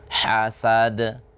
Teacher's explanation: Jangan di akhir qalqalah seperti ada hamzah di akhirnya.